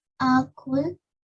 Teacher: Now try to make the a bit less long. Only one count.